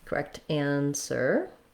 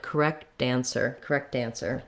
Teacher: When I link that, correct ends up sounding a little bit more like a D, and it sounds more like correct answer.